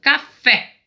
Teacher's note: Fé é mais forte, então é oxítona